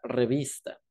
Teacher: a diferencia de cómo se articula en el español de España la punta de la lengua se apoya en los dientes inferiores como en la s latinoamericana mientras que la española se pronuncia con la punta de la